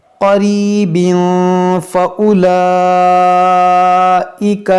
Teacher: یہاں پر دیکھیں تنوین کے بعد فا ہے، تو یہاں پر بھی ہم اخفا کریں گے